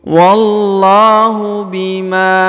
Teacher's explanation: huruf lu dipanjangkan dua harakat karena di depannya terdapat wau sukun